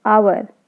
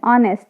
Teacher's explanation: So H, we can't hear the sound of H. So H is silent.